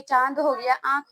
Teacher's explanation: अनुनासिक, जो नाक और मुंह के सहायता से बोले जाते हैं